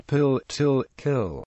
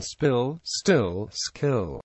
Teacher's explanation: they are unaspirated for almost all speakers when immediately following word initial S